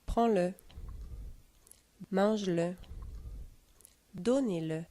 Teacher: Le E muet est accentué dans le seul cas du pronom personnel le.